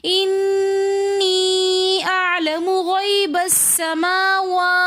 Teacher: वाव की अदायगी में होंठों को हमने प्रॉपर तौर पे गोल कर लेना है ताकि वाव मुकम्मल तौर पे सही तरीके से अदा हो। समावा, वाव के ऊपर भी खड़ा ज़बर होने की वजह से हमने खींच कर पढ़ा